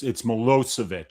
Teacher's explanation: So yeah, the second syllable is accented.